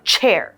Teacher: the CH makes a ch sound, kind of like a choo-choo train. And you will notice that air is pushed out of the front two teeth.